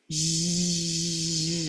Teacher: I feel my voice running. I feel some vibration.